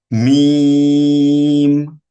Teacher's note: ঠিক একই রকম ভাবে 15 নম্বর মাখরাজ দুই ঠোঁটের মধ্যস্থল থেকে উচ্চারিত হয় মিম। মিম কিন্তু আমাদের 9 নম্বর মাখরাজ নুনের মতো নাকের সাথে বাঁধবে।